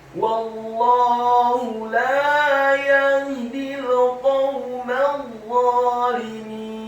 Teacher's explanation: Huruf mimnya dibaca tipis, fathah, cukup 1 harokat saja karena setelahnya langsung disambung huruf dha yang tafkhim dan tasydid, fathah 2 harokat karena harokatnya tegak. Setelah membaca huruf dha yang tafkhim dengan posisi bibir bawah kita agak tertutup, posisi lidah kita di langit-langit atas, ditasydidkan tafkhim fathah 2 harokat karena harokatnya tegak.